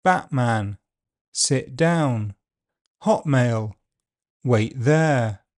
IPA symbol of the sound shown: ʔ